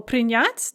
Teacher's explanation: in the infinitive, the stress is on the ya